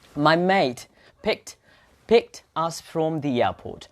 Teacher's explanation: So mate here, the T becomes P.